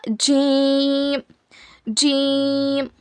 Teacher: जबान की बीच के हिस्से को ऊपर के तालू में लगाने से जी अदा होता है। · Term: जीम